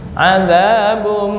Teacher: Za kepanjangan, dua harokat aja, jangan lebih.